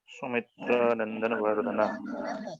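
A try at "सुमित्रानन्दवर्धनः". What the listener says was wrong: फिर एक ज्यादा नो लगा दिया आपने, सुमित्रानंद वर्धन, कौशल्यानंद वर्धन जैसे था वैसे ही सुमित्रानंद वर्धन। देखिए शब्द संस्कार है।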